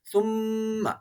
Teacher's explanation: ثم تولیتم کی میم مشدد ہے، یہاں پر ہمیشہ غنہ ہوتا ہے